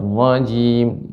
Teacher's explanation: dimasukkan ke tasydid ra, ya, dan juga disertai dengan tebal.